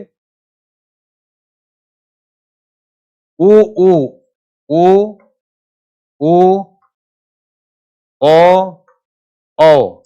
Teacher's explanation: मुख को गोल बनाकर उच्चारण करते हैं। उसको बोलते हैं संवृत स्वर।